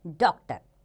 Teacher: इसका उच्चारण आ तथा ओ के बीच की ध्वनि के रूप में होता है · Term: आगत चिन्ह